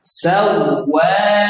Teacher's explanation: Nah, kalau waw tasydid ini jangan lama, jangan dilamakan, hentak.